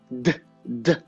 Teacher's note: Ele é um fonema plosivo, quer dizer, eu não consigo prolongar. Eu só consigo repetir.